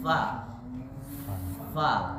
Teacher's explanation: huruf Fa bukan dempetan antara dua bibir